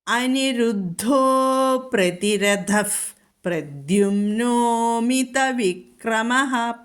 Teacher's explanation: ഇവിടെ പ്രതിരഥഃ, അവിടെ ഉപധ്മാനീയം വന്നു, വിസർഗം കഴിഞ്ഞിട്ട് പാ വന്നിരിക്കുന്നു, അതുകൊണ്ട് അവിടെ ഫ എന്ന് ചൊല്ലണം